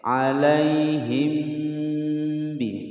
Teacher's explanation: Mim sukun bertemu ba, ikhfa syafawi. Didengungkan selama 2 ketukan. · Na pendek. Ya sukun sebelumnya fathah tidak dibaca panjang